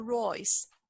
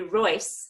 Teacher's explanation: just so you know that s is actually a Z